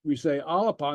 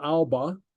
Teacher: Alapa. Note the insertion of the A. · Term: helping vowel